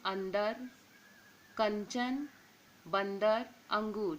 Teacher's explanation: अनुस्वार का उच्चारण केवल नासिका से होता है